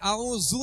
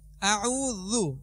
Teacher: اعوذ، اب اس میں ذال ہے، ذال کو نرمی سے پڑھیں، اعوذو نہیں پڑھیں گے، اعوذ نرمی سے، اور اس پر پیش ہے، حرکات دراز نہیں ہوتی تو اس میں پیش ہے، پیش کو کھینچیں گے نہیں.